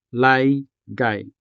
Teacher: Now this word laygay alone already has two I diphthongs, one in the first syllable and another one in the second syllable. Laygay. Just like the diphthong ow, I is also the final sound of a syllable.